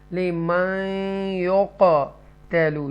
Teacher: حروف یرملون میں سے نون ساکنہ کے بعد یا ہے تو یہاں گنہ کریں گے، لمن یقتلوا، یہاں پر قاف جو ہے بولڈ قاف ہے اور حروف قلقلہ کا قاف ہے، تو یقتلوا آپ اس کو ادا کریں گے۔